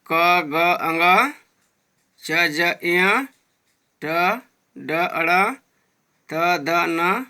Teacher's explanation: ये अल्प प्राण व्यंजन है। इनके उच्चारण में हवा की कम मात्रा तथा हवा कम शक्ति के साथ बाहर आती है।